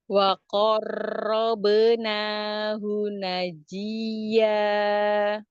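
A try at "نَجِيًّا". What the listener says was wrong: Najiya. Ya, tasdid maber, tapi sifat ya lin lembut. Ya, jadi tidak najiya gitu enggak najiya walaupun ditekan tapi lembut.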